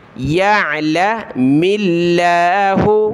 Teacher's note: ملائیں گے، لفظ اللہ سے پہلے میم پر زیر ہے تو لفظ اللہ کو ہم نے پتلا کر کے باریک کر کے پڑھنا ہے